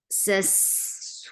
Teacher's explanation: give rakhawa, give safir. It is light and it goes on.